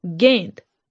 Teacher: दूसरा है गेंद, फिर से उच्चारण कीजिए, गेंद, ग के ऊपर जो है ए और न की ध्वनि आ रही है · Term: अनुस्वार